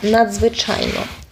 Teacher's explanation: буквосполучення дз буде давати два окремих звуки